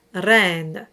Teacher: And normally for classical music, my advice is to roll the R on the tip of the tongue